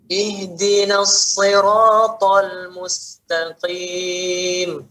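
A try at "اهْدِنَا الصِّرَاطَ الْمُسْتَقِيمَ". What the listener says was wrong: Ya, masih nanggung ngalirkannya Pak ya.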